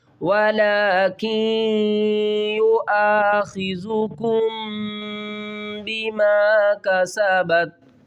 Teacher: واو زبر وا، لام کھڑا زبر لا، ولا قاف نون یا زیر کی، ولا کی یؤاخذکم، میم ساکن کے بعد اگر با آ جائے تو میم ساکن کے اوپر ہم اخفا کریں گے، یعنی کہ آواز کو چھپا کر پڑھیں گے۔